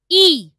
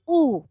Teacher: ই এর উচ্চারণের সময় জীব সামনের দিকে এগিয়ে আসছে উ এর উচ্চারণের সময় জীব পেছনের দিকে পিছিয়ে যাচ্ছে ঠোঁট ই এর উচ্চারণের সময় প্রসারিত হয়ে যাচ্ছে উ এর উচ্চারণের